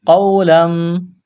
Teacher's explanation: واو ساکن سے پہلے زبر ہے، واو لین ہے، بغیر کھینچ کے پڑھنا ہے